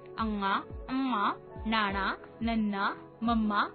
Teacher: ਅਨੁਨਾਸਿਕੀ ਧੁਨੀਆਂ ਦੇ ਉਚਾਰਨ ਸਮੇਂ ਕੁਝ ਆਵਾਜ਼ਾਂ ਨੱਕ ਵਿੱਚੋਂ ਨਿਕਲਦੀਆਂ ਹਨ